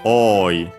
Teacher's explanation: Yeah, it's a long O. So yeah, the accent is actually on the first O. So yeah, oi, high, low, low.